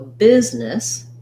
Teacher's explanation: So you'll see the stress marker, the biz, and then this letter E is also going to say a lax I sound because it's a reduced vowel in that syllable. So business is long and short on the nis.